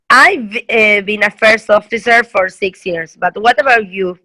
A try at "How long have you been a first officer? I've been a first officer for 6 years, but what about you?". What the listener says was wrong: Yeah, perfect.